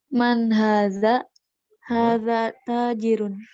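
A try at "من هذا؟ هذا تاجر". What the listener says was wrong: Naam, ahsanti. Hadza tajirun.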